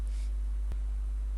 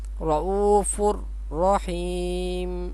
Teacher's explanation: یہ تنوین ہے، دو پیش ہیں، اس کے بعد را ہے تو یہاں پہ بھی غنے کے بغیر ادغام کریں گے. رؤوفن اس طرح نہیں پڑھیں گے.